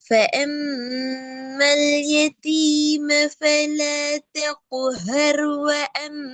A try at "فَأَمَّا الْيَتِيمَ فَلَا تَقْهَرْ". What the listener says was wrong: பிழை. ஹர். ஹர் ஹர் ரெண்டு சின்ன ரா. ரா வல்லினமா வல்லினம். அப்ப வல்லினது நாக்கு எங்க படணும்?